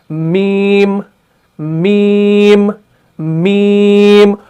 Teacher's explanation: तो जब ये आपस में मिल जाते हैं, यानी ऊपर वाले होंठ का खुश्क हिस्सा और निचले वाले होंठ का खुश्क हिस्सा, जब ये आपस में पूरी तरीके से चिपक जाते हैं तब जाके हरफ मीम अदा होता है